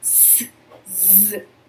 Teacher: O S e o Z também são fonemas que são articulados da mesma forma e que eles geram uma espécie de soprinho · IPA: /S/ /Z/